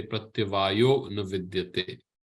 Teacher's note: Pratyavayah na vidyate, the aha sound in sandhi becomes o.